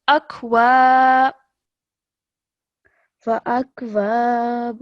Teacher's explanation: what does alif madda mean? You prolong it. For 2 seconds.